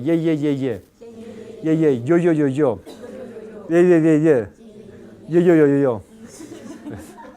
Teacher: Cuando se pronuncia ye, siempre ocurre fricción. La lengua se desliza desde su posición inicial hacia el núcleo vocálico que le sigue.